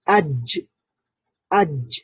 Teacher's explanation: যেমন আমরা যখন এই হরফগুলোতে সাকিন থাকে, যেমন আজ, আজ, আমরা আওয়াজটাকে বন্ধ করে ফেলি সাথে সাথে, আজ বলার সময় আজ আওয়াজটা বন্ধ হয়ে যায়। তারপরে একটা জ সাউন্ডটা কলকলার কারণে আরেকটু রিফ্লেক্ট হয়, আজ। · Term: শাদীদার হরফ